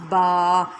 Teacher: با ہمارے اوپر اور نیچے والے ہونٹ کو ملانے سے ادا ہوتا ہے۔